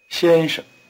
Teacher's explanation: The first syllable is in the high tone. The second is in what we call the neutral tone. Notice that it is weak and short, and that its pitch is rather low.